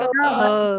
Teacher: दंत वर्ण है, दांतों की सहायता से जो बोले जाते हैं। देखो जीभ तो बोलती है कि सिर्फ कंठे को छोड़कर बाकी में जीभ की सहायता ली जाती है, पर वो पहले तो जैसे हमने बोला था मूर्धा तालु, अब ये जो है दांतों को स्पर्श करती है।